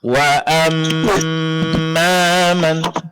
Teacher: dengung pada mim tasdid. Lamanya sama dengan nun tasdid.